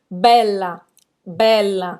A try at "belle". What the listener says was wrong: Termina a pronúncia no L. Tem gente que fala, é como bela, é como se fosse um A no português.